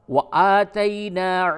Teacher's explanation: نون الف زبر نا، الف مدہ ہے، تھوڑا سا کھینچیں